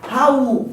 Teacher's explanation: olhem o A e o U, são tão fortes que eles não podem ficar na mesma sílaba. Eu tenho um hiato.